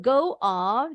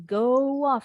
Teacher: seperti nambahin bunyi W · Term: menyambung-nyambung